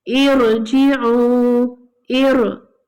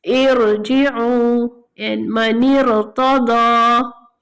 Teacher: the ra is pronounced with Tafkheem, heavy, when preceded by a Hamzatul Wasl. If we start on the Hamzatul Wasl with the kasra, or if we continue from the previous word, in both cases we will read ra heavy.